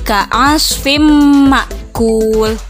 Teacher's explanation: tanwin tersebut dimasukkan ke dalam huruf mim disertai dengan memakai guna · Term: idgam bigunnah